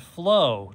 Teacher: It's the short O sound, ah. O-W says O, the long O sound. We don't make a W sound at all.